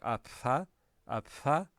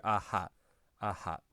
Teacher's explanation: people stopped closing their lips the whole way when they were pronouncing a p sound